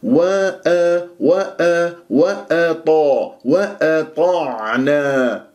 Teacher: لا تفخم الهمزه لمجاورتها الاطاء المفخم